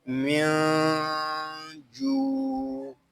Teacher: یہاں نون ساکن ہے، اس کو سکون کے ساتھ ادا کریں گے. نون ساکن کے بعد حروف اخفا میں سے جیم آ رہا ہے، یہاں اخفا بھی ہوگا. اخفا اس وقت ہم کریں گے جب ہم جیم کو پڑھیں گے.